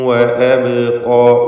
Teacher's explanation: ബാഇൻ്റെ സുക്കൂൻ ഖൽഖല സൂറ നൽകി ശബ്ദം ചലിപ്പിക്കുക